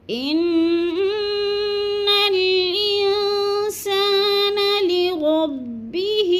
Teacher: تو آواز کو ناک میں چھپا کر پڑھنا ہے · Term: اخفا